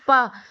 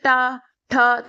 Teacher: आप जब पा बोलोगे तो पा, होठ आपके बंद होते हैं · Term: ओष्ठ्य वर्ण